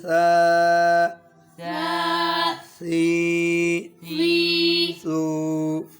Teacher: سا کا مخرج زبان کی نوک صرف اوپر والے دانتوں کا کنارہ ہے